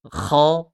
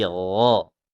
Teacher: sama dengan kha hanya dihilangkan ngoroknya.